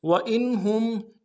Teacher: حمزہ کو نون ساکن کے ساتھ ملانا ہے، نون ساکن پہ یہاں پہ اظہار ہوگا، ہم کو میم ساکن کے ساتھ ملانا ہے، ہا کو یہاں پہ بھی اظہار ہوگا۔